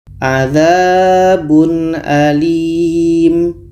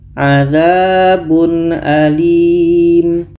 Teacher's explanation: Ada tanwin bertemu a. A ini adalah huruf izhar, maka ini dibaca jelas. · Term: izhar halki